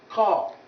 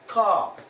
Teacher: This k sound is a velar plosive sound, voiceless. You produce it with the back of the tongue pushing the soft palate and then allowing the air to come out with some sort of force. And that's why you call it plosive.